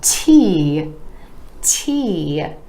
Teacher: The T with the tip of the tongue coming behind the teeth to the alveolar ridge.